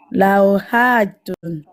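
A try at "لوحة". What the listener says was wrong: Par contre, ne prolonge pas, c'est pas hatun. Lauhatun.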